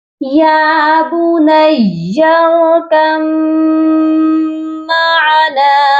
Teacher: میم مشدد ہے اس وجہ سے یہاں غنہ بھی کیا جائے گا